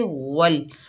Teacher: वाव को लाम मुशद्दद से मिलाकर पढ़ेंगे, बीच में हमज़तुल वसल हज़फ हो जाएगा